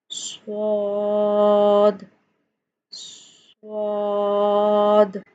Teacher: صاد کی ادائیگی کی، تو اس میں سے بھی سیٹی کی آواز آئے گی